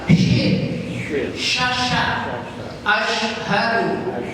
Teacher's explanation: Kalau shin tengah-tengah lidah ditarik ke atas.